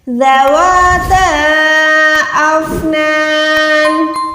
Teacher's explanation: نون 2 زیر پہ رک رہے ہیں، تبھی جو ہے میں 2 زیر کو ساکن کر کے ادا کر رہی ہوں۔